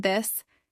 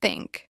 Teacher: the voiced version as in this and the unvoiced version as in think